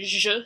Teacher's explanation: it represents the sound zhh [ʒ], like in the middle of <treasure> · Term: Ezh